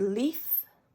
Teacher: When the letter L, and again I'm doing a real exaggerated front of the mouth L there, when the letter L happens before a vowel or in between two vowels, which also is before a vowel, it's pronounced at the front of the mouth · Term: clear and dark L